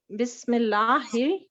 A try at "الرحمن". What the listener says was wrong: الرحمن نہیں ہے یہ ہے الرحمن. راہ زبر جی راہ زبر راہ ہوتا ہے ٹھیک ہے، رہ نہیں ہوتا. یہ ہم اردو میں پڑھتے ہیں اس طرح نا، لیکن ایکچولی یہ عربی کا لفظ ہے تو اس کو اسی طرح ادا کریں جیسے کہ ہمیں سکھایا گیا ہے.